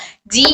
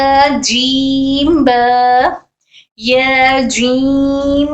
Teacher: जबान के दरमियानी और तालू के दरमियानी से अदा होता है।